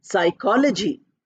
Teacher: We start with PS, but we don't pronounce the P.